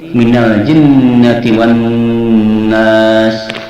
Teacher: 'nun' dipegang selama dua harakat dalam 'wan-nas'